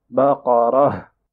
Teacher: موسى لقومه إن الله يأمركم أن تذبحوا بقرة تا مربوطة إقتئن round تا. When you are stopping on round تا, you change it into a ha. So you will be reading بقرة.